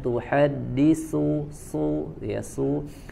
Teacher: tidak ada sifat sofir pada huruf sa, maka jangan disofirkan, jangan ditajamkan suaranya